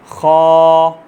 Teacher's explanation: मोटा पढ़ने का मतलब क्या है? खा, यानी आपके होंठ थोड़े से गोल होंगे